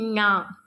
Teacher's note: நாவின் நுனி மேல்வாய் அன்னத்தின் நடுப்பகுதியை தொடுவதால் நகரம் பிறக்கிறது.